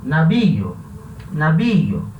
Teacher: Então é um hiato. Hiato entre o I, que é uma vogal fechada, e o O, que é uma vogal aberta. Fechado com aberto vai ter acento.